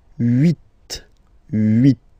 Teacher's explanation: this H letter here, okay, doesn't exist phonetically, so we don't really pronounce it